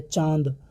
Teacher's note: नाक से कम मुख से ज़्यादा वायु निकल रही है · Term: चंद्रबिंदु